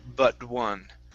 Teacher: with the T on but, okay, we want to use a flap T there